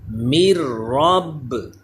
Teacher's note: تو کون سا قاعدہ ہوا, یہ حروف یرملون ہے کیونکہ را بھی, تو یہاں بھی ادغام کا قاعدہ ہوگا لیکن یہاں غنہ نہیں کریں گے کیونکہ ہم نے ابھی پڑھا ہے کہ را اور لام میں غنہ نہیں کرتے. تو نون ساکن کے بعد را حروف یرملون لیکن یہاں ادغام بغیر غنے کے ہوگا. جب ہجے کریں گے تو نون کا نام لیں گے, رواں پڑھتے ہوئے نون کی آواز نہیں آئے گی.